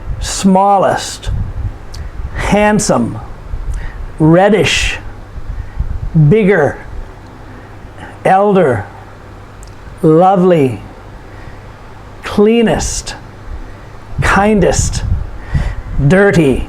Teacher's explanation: So these are all two-syllable adjectives, and the emphasis is put upon the first syllable.